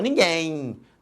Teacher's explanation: no final este M representa um ih aqui representado foneticamente pela letra Y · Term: semivogal